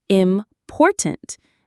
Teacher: Say important with the stress on the second syllable.